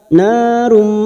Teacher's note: masuk dan mendengung masuk pada huruf mim dan ditahan selama tiga harakat